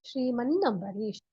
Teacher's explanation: the nasal sound will get doubled. The nya or the na or the na will get doubled. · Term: யமுடாகம சந்தி